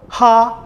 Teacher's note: ha, the aspirate, should be also pronounced as a guttural sound